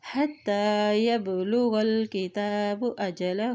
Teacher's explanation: تا کے پر کھڑی زبر ہے، اس کو ایک حرکت لمبا ادا کریں